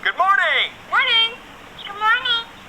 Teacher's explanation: And then, for the General American analysis, the consonant is rhotic, meaning that the R is clearly pronounced.